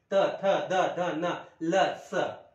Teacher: म्हणजे यांची उच्चारण फक्त दंत द्वारेच म्हणजे दाताद्वारेच यांची उच्चारण होणार आहे